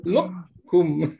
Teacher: Qaf tu kita datangkan sifat yang tebalnya dan kita tak sebut qalqalah dan kita tak wujudkan qalqalah qaf itu dan terus kita keluar ke huruf kaf. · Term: idgham mutajanisain naqis